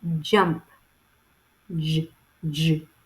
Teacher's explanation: The bold J represents the voice post-alveolar affricative phoneme, J, J.